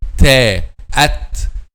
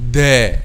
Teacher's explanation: So at ta, no vibration of the vocal cords. At dal, there is a vibration of the vocal cords. At dal is voiced letter.